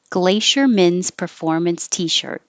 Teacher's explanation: Men's performance t-shirt just keeps coming down, down, down.